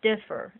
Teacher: The accent's on the first syllable, so I'm not going to double the R.